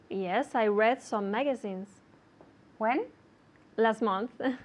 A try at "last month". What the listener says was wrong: one more time and remember to say the t for me